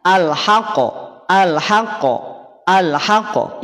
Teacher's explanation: Bunyi pantulan, bunyi memantul pada saat qaf tanda sukun atau pada saat qaf sukun. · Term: Qalqalah